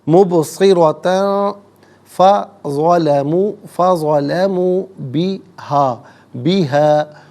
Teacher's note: مبصرۃ، را پر زبر ہے، را کو پر کر کے پڑھیں گے، تا پر دو زبر کی تنوین ہے، تنوین کے بعد فا حرف اخفا ہے، تو یہ تنوین پر اخفا کیا جائے گا، ناک میں آواز لے جا کر گنگنانا، اسے اخفا کہتے ہیں۔